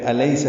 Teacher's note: سین کو صفیر کی آواز سے ادا کرنا اور جلدی پڑھنا ہے